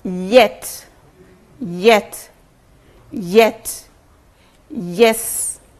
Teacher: the body of the tongue touches the hard palate